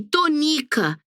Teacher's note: No nome de Dona Tonica, a sílaba tônica é ni.